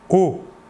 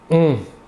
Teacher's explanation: L'air sortira entièrement par la bouche. Alors que pour le ON, l'air sortira par le nez.